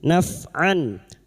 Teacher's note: Nun sukun atau tanwin bertemu dengan salah satu dari enam huruf ini, termasuk hamzah. Bunyi fathah tanwin terbaca dengan jelas tanpa nasalisasi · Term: izhar halqi